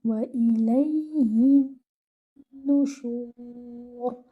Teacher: Now you have this noon mushaddad. So give akmal gunna on your noon mushaddad